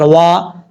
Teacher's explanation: اب واو کے آگے الف ہے، ایک الف کی مقدار لمبا کر کے پڑھیں گے. واو کو پڑھتے وقت دونوں ہونٹ کو واو کو پڑھتے وقت ہونٹ کو گول کر کے پڑھیں گے.